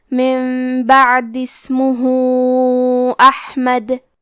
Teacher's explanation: یہاں حکم ہے مد صلہ کبریٰ تو ہم اپنی آواز 2 سے 4 مد کے برابر لمبی کریں گے